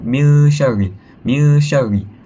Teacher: Bila kita baca itu dibaca dengan dengung dan dipanjangkan kepada dua harakat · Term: ikhfa hakiki